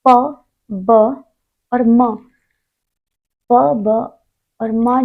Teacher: प ब और म जो है अल्प प्राण है